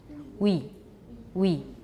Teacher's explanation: start from a high rounded vowel that is fully back, like a cardinal oo. Glide from this vowel very rapidly to the following vowel. The result will be similar but not identical to the English word we. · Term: French sound w